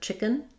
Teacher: first syllable stress, and in the American accent, chicken, we're really going to reduce and have a schwa or almost no vowel there. So you can think about it as having the ch sound.